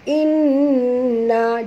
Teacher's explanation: Thumma dengung kerana mim bertasydid wajib al-gunah. Inna juga dengung wajib al-gunah.